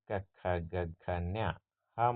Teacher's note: ಕಂಠದಲ್ಲಿ ಹುಟ್ಟುವ ವರ್ಣಗಳನ್ನು ನಾವು ಕಂಠ್ಯ ಧ್ವನಿಗಳು ಅಂತ ಕರಿತೀವಿ